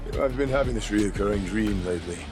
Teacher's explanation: instead of dream with a very specific dr he says dream with more of a jr